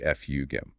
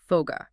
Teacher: the hard, unvoiced C-K sound in fugem finds itself trapped between two vibrating vowels. To save energy, the vocal cords just keep vibrating through the consonant, voicing it into a soft G.